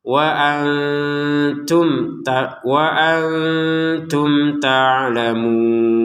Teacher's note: Mim sukun bertemu ta. Ini kita baca dengan jelas